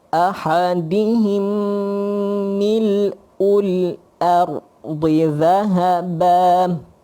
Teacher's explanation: tutup mulut rapat. Kat sini mim, jumpa mim, idgham mislain.